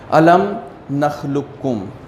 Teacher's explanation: قاف ساکن ہے اور کاف متحرک ہے، تو اس قاف کو پڑھا ہی نہیں جائے گا